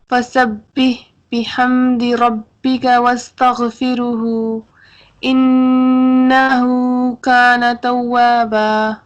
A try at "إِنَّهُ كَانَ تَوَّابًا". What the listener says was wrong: واؤ کے اوپر تھوڑا سا ہم اسٹے کریں گے، واؤ کے اوپر اسٹے کیجئے. یہ جو واؤ ہے یہ والا،